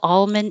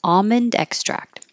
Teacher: hear people say it with the L almond and that's okay but without the L is the most common for American English speakers